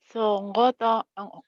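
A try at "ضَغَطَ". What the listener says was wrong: Salah, ada titiknya. Do-nya bulat, dogoto.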